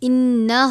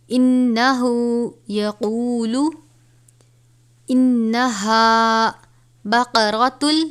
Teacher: نون مشدد ہے، سختی سے بھی پڑھیں گے اور غنہ کر کے بھی پڑھیں گے